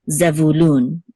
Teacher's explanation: This kibbutz says u, and then nun sofit which says lun, and the accent is on lun. Oops, the accent is on lun, which is the last syllable. So zevulun, okay, and then this is a vav which says u again.